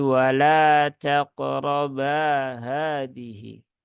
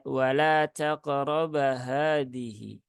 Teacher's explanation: bnya itu pendek wa taqroba Hadi nah itu enggak tepat ya jadi bnya dibaca panjang dua harakat Cukup dua harakat saja jangan lebih Jangan kurang · Nah, ada alifnya. Maka ba-nya ini dibaca 2 harokat mad asli. Jadi wala taqraba hadihi.